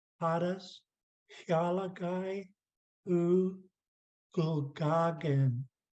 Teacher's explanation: Notice Hadas is all low tone.